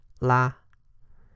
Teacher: And L, a lighter L, similar to the L of Mandarin.